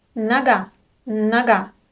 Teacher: The unstressed O is pronounced as a.